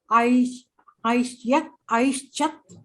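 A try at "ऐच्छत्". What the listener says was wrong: There is no sh there. Aichat.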